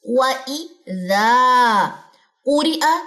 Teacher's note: ذا الف مدہ، یہ لمبا ہوگا کتنا؟ 2 سیکنڈ کے حساب سے، 2 کاؤنٹس کے حساب سے